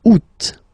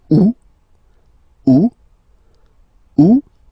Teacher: The first one you don't pronounce the final t the U. Second one you pronounce it oot.